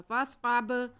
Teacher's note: बा पे साकिन है तो इस पे कलकला होगा।